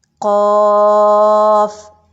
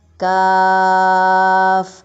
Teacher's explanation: कौवे के बिलमुकाबिल ही थोड़ा सा मुंह की जानिब अदा होगा। जैसे ज़ुबान की जड़ को आप जब ऊपर उठाएंगे तो तब तो कौफ अदा होगा जो मोटा कौफ है